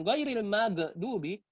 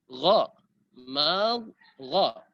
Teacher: Gha itu sifatnya rahawa. Apa itu rahawa? Mempunyai jedah ketika sukun. Kalau kita baca seperti ini, ghairil magdubi, terlalu tinggi jedahnya.